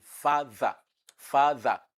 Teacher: We have voiced dental sound in father, father. So the th in the middle of father is a voiced dental sound.